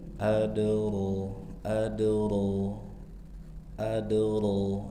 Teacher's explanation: Sugra. Kecil karena terletak di tengah-tengah kata. Jangan dihentak. · ro tafkhim tebal dua harakat. Mad thobbi'i. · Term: Qalqalah